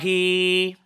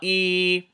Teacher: because it's a kasra, you have to say I, but because of the ya saghira, you have to extend it to 2 movements